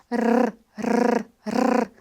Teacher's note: são várias oclusões, são várias são múltiplas passagens do R pelos alvéulos e de maneira muito rápida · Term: vibrante múltiplo, múltiplo